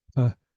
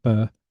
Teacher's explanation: And you can hear there's a only very slight difference between p and b, and that's that the in b it's a voiced consonant, so it's being sounded in your throat. It's the same sound, but it's sounded in your throat when it's the b.